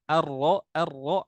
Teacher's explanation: ro ro pun di ujung lidah tapi dia bergeser sedikit ke Z lisan ke punggung lidah ya